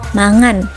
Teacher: kata makan bisa diucapkan dengan variasi seperti mangan di beberapa daerah